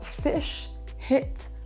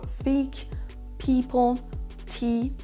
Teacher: Ce sont des i courts comme dans les mots fish, hit, à l'inverse dans les mots speak, people, tea, on aura des i longs.